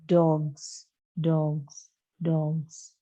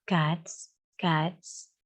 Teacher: So next, so you have to remember, z sound is a voiced, z sound is a voiced, and s sound is unvoiced